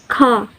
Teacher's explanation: voiceless velar plosive